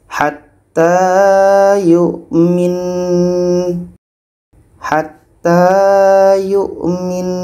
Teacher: nun tasdid itu dengan mim tasdid hukumnya adalah wajibul gunnah. Kita harus dengungkan. Kita dengungkan dulu, baru matikan huruf terakhirnya.